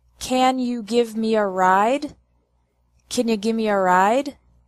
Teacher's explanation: In this question, the words give me also sound like gimme.